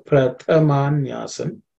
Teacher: Pratha. This is tha is the second letter in the dha varga, so it has to be aspirated.